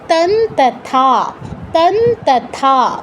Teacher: তাই অনুস্বারের জায়গায় আমার দন্তন্য হসন্ত উচ্চারণ করতে হবে।